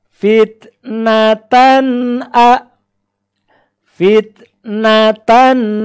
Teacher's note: Suara tanwin pada huruf tan itu tidak boleh ditahan lama. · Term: tanwin idhar